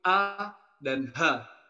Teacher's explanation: huruf ha dan huruf hamzah yang keluar dari pangkal tenggorokan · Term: aqsal halqi